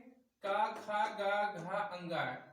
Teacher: इन पांचों वर्णों का उच्चारण स्थान कंठ से होता है